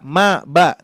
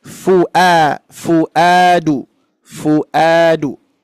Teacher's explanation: lebih tepatnya menyentuh ya bibir Tengah bawah menyentuh ke gigi seri atas ya Jadi yang bergerak itu di bibirnya bukan giginya jangan Terbalik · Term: huruf Fa